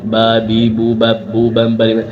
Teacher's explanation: Antara bibir atas bibir bawah ketemu.